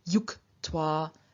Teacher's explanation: or to link we have even more of a change happening the ju loses its voice in front of the unvoiced t but also because j is a palatal sound it doesn't just